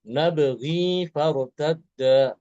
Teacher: Nabghi dia dibaca panjang 2 harokat ya.